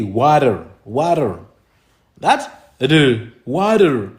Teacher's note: The second one is the tap or the flap. You see sometimes in America when they talk about when they pronounce the word for water, they say water.